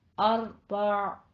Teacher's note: 4 میں را کو مفخم کرنا ہے، اور عین پہ جب وقف کریں گے تو اسے وسط حلق تک ادا کرنا ہے اور ساکن رکھ کر لینا. ٹھیک ہے. اس پہ حرکت نہیں بنانی.